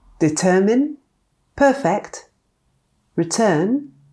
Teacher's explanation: The schwa can also sound like a short version of the vowel er, which appears in words such as determine, perfect, return. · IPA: /dɪˈtɜːmɪn/ /ˈpɜːfɪkt/ /rɪˈtɜːn/